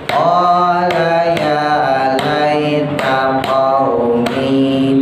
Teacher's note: Qala ya laita qaumi, tahan, ya-nya sukun, ketemu ya lagi. Nah itu namanya idgham mislain, ya, huruf yang sejenis.